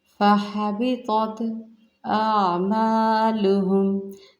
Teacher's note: آئین جو ہے تھوڑا سا نرم پڑھا جائے گا، لیکن یہ نہیں ہوگا کہ آئین کی ساؤنڈ الف میں بدل جائے، یہ نہیں ہوگا، نرم ضرور ہوگا لیکن ساؤنڈ آئین میں نہیں بدلے گی، توجہ دیجیے گا۔